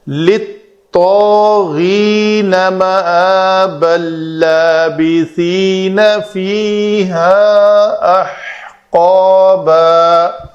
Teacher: تنوین کے بعد لام ہے تو اس کا ادغام کامل ہو جائے گا، تنوین کا نون پڑھنے میں بالکل باقی نہیں رہے گا، اس لیے اس لام کے اوپر ایک شد لکھنے میں ملتی ہے ہمیں۔